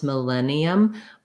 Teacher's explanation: As we're linking syllables, we're only saying the L sound once, millennium, but as you're breaking it down, it might be helpful to think of it as millennium, just so that you can sequence and put that L in as it's more easy for you.